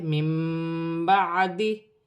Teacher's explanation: نون ساکن کے بعد با آ رہی ہے، نون ساکن کے بعد جب بھی با آئے گی تو وہاں پر چھوٹی سی میم لکھی ہوتی ہے، نون ساکن کی آواز کو میم سے بدل کر غنے کے ساتھ ادا کیا جاتا ہے، اسے اقلاب کا قاعدہ کہتے ہیں، جیسے من بعدی۔